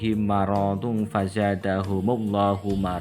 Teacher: Misli artinya sama baik sifatnya maupun makhrajnya yaitu mim sukun bertemu dengan huruf mim. Cara membacanya adalah memasukkan huruf mim ke dalam huruf mim disertai dengan suara ghunah sekitar dua ketukan atau dua harakat. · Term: idgham mutamasilain